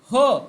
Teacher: ह वर्ण उच्चारताना आपल्या फुफुसातील हवा म्हणजे प्राणवायू मोठ्या म्हणजे महा जोराने तोंडावाटे बाहेर फेकली जाते म्हणून त्याला महाप्राण असं म्हटलं जातं आता महाप्राण महत्त्वाचा एक आहे